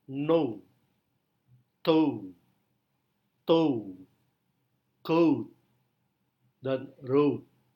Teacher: O adalah close mid back rounded vowel. Bisa kita temukan dalam susunan kata no, toe, toe, coat, dan road.